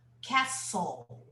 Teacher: We don't pronounce the T, castle. Yeah, we don't pronounce the T, we don't pronounce the E, we say castle. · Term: silent letter